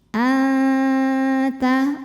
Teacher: ujung lidah kita mau nempel ke sana ke Pangkal gigi tapi belum masih ada jarak an Oleh karena itu bunyi dengungannya sedikit ya Bunyi masuk hidung · masih ada jarak an Oleh karena itu bunyi dengungannya sedikit ya Bunyi masuk hidung sedikit aliran suara dari mulut masih banyak karena ta makhrajnya dekat dengan makhraj huruf nun la hukum tajwidnya · aqrab ikhfa aqrab sebab nun sukun menghadapi huruf ta cara membacanya bunyi nun sukun disamarkan dipersiapkan menuju makhraj huruf di depannya yaitu huruf ta terus ada dengungannya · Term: ikhfa Hakiki